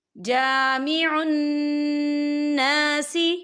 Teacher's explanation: ربنا انک جامع الناس، جامع الناس، یہاں نون مشدد ہے، یہاں پر غنہ بھی ہوگا اور یہاں پر الف مدہ بھی ہو رہا ہے، خالی الف سے پہلے زبر ہے تو ہم اسے دو حرکت کی برابر کھینچے پڑھیں گے